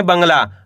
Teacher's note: यहाँ पे बा के ऊपर अनुस्वार की मात्रा है, तो आपको करने के आधा ना का उच्चारण तेजी से निकालना है।